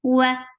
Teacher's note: Wa for circular lips for fatha open your jaws. The sound is short.